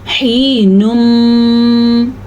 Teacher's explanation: یہاں پہ ہونٹ آگے سے بند ہو جاتے ہیں اور پھر اس طریقے سے غننے کی آواز آ جائے حینم، کیونکہ میم جو ہے دونوں ہونٹوں سے نکلتا ہے اس لیے اس میں ہونٹ بند ہوتے ہیں۔ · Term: ادغام بالغنہ